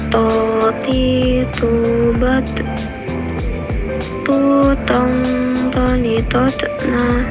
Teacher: Selanjutnya huruf to, keluar dengan menyentuhkan ujung lisan dengan tepat tumbuhnya dua gigi seri bagian atas. Huruf to tidak mengalir nafas dan diucapkan secara menebal.